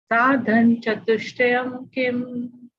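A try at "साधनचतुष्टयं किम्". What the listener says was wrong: Okay, again, same mistake. Huh? Sadhan chatushtayam nahi. Sadhana chatushtayam kim.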